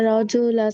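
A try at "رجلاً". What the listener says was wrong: রজুলান, তানবিন আছে, দুই জবর।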